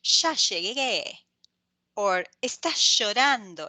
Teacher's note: Argentinians and Uruguayans actually have the sh sound, and they will say something like ya llegué or estás llorando. It's very sh, and they have the little accent.